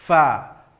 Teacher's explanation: ujung gigi seri atas tempelkan ke bibir bawah, fa. Maka jelas nanti tampak sifat hamas, mengalir nafas ketika membunyikan huruf fa.